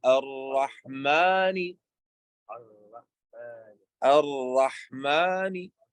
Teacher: Harf al-ra is from the tip of the tongue, what lies opposite of the gums, like close to the noon, close to the articulation but of the noon.